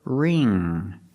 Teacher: And the ng makes the nasal sound. There's no g sound.